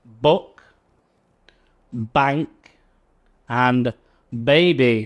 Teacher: The b, there is more of a vibration in the throat, so that's a voiced sound.